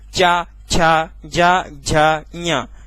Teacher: ये तालु है और जीभ ऊपर की साइड जाएगी और उस गड्ढा वाले भाग में ऐसे चिपक रही होगी।